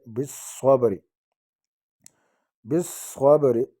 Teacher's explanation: با ساکن آگے زبر ہے، با پر قلقلہ ہوگا، قلقلے والا حروف ہے